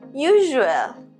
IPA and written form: ˈjuː.ʒu.əl (usual)